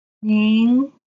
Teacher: this rising diacritic, our voice should go up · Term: second tone